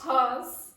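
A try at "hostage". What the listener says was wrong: Yes. Exactly. Good job. That's very good, ladies.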